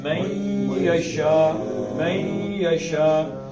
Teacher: یضل میں، نون کے بعد یہ آ گئی ہے تو نون کے اندر سے یہ کی آواز نکالیں گے. میں یشا، میں یشا، اس کو بھی دور کہتے ہیں.